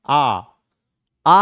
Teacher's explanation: विवृत स्वर के जिनका उच्चारण करते समय हमारा जो ताल है यह पूर्ण रूपेण खुलती है